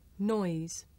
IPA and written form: nɔɪz (noise)